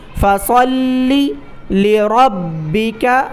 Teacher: فصل لربک وانحر، فصلی، لام پر تشدید ہے، جس لفظ پر تشدید ہو اس کو تشدید والے لفظ کو سختی کے ساتھ ادا کیا جاتا ہے۔ فصلی لربک، را کو با کے ساتھ ملائیں کیونکہ با پر تشدید ہے اور با کو سختی کے ساتھ ادا کریں۔